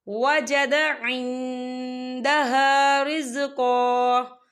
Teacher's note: وقف کی صورت میں ایک زبر پڑھا جائے گا، 2 زبر نہیں پڑھے جائیں گے